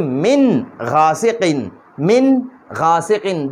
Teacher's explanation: د نون کې به اظهار کو، دا نون به ښکاره کو، دا دې کې به اواز پوزې ته نه خېجو